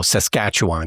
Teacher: it's emphasis on the second syllable and you just let everything else just go